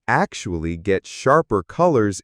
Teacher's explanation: Emphatic delivery on actually sharper colors.